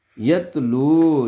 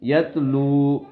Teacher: یہ واو مدہ ہے, لام کو کھینچیں گے